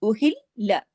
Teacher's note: लाम की आवाज 2 दफा आनी चाहिए